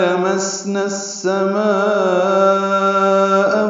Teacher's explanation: لمسنا میں سین ساکن پہ ہم سے، اس سے پہلے جو لام ہے اس کو جلدی پڑھنا ہے، لامسنا نہیں پڑھنا ہے، لمسنا ہے، لیکن نون کو السماء کی سین سے ملانا ہے، ادغام شمسی ہے۔ ما میں مد متصل ہے، الف مدہ کے بعد حمزہ کی کلمے میں آنے کی وجہ سے۔